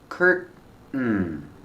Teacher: You can say curtain, tin, curtain, or curtain, curtain, where you make the stop T and it falls to an N.